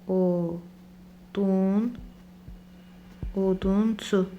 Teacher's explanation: Artıq son saiti dodaqlanan və qalındır. Ona görə dodaqlanan və qalın sait olan o tərkibində U şəkilçisini artırdıq.